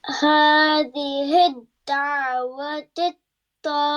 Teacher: make sure that the last ha is softer, it is not sharper